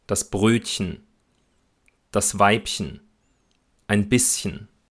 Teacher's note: Aber auch in der Diminutivendung chen, also in dieser Verkleinerungsform, spricht man CH als Ich-Laut. Wobei dann aber das E-Schwa in der Regel wegfällt.